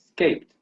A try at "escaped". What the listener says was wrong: Be careful with the ending. I don't know if I cannot hear it, but okay.